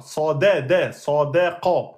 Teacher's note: On a une lettre amincie entre deux lettres emphatiques.